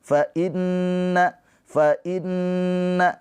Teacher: Fainna nun bertasydid ghunah musyaddadah. ditahan dua harakat nunnya ghunah ya keluar dari hidung